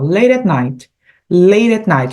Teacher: olha como os T eles são quase para dentro